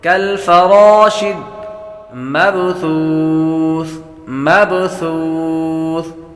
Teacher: با حروف قلقلہ میں سے ہے، اس لیے اس کو قلقلہ کریں گے،